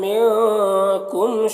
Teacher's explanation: मिनकुम के नून में इख्फा हो रहा है और मीम में इजहार शफवी हो रहा है।